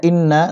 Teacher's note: নুনে তাসদীদ হচ্ছে ওয়াজিব গুন্না, গুন্না করতে হবে